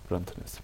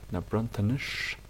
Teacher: So here we have a sh sound, whereas here it's a s, because on this page we have an I, because it's plural, so the I changes the quality of the S from a normal s to a sh